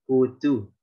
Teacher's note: Kalau orang Mesir itu lebih mudah, dipipihkan. Jadi dhammah tapi pipih. Tapi nggak pipih seperti kasroh murni ya.